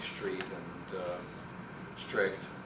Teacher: the change of S to sh in front of TR